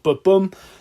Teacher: 2 beats in a line, an unstressed and a stressed syllable, you've got ba-bum, then that would be what we call an iambic monometer written poem in iambic monometer.